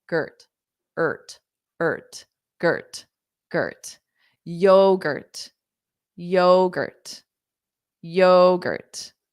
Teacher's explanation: we have that strong yo, like yo, yo, very informal way of saying hi or hello, yo. And then the GURT is unstressed.